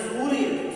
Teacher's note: अब यहाँ देखिए सूर्य, सूर्य नहीं, सूर्य, तो यहाँ पर सू जो है वो बड़ा हो, दीर्घ ऊ का प्रयोग किया जाएगा